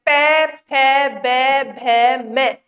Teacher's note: जब हम पै वर्ग उच्चारित करते हैं, पै, फै, बै, भै, मै, तो हमारे होठ आपस में मिलते हैं